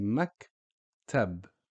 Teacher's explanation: we stop on the K sound. So we say maktab. And we stop on the B sound. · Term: sukoon